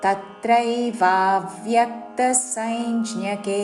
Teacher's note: వా దీర్ఘము దాని మీద ఆఘాత వ్య లోని య మీద ఆఘాత